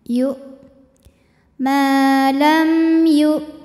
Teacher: apabila kita tekan hamzah ini ke makhrajnya, yaitu ke pangkal tenggorokan, maka semakin ditekan semakin tertahan bunyinya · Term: syiddah